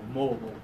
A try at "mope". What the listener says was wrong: Yeah, pull the lip down more.